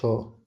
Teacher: सघोष महाप्राण व्यंजन है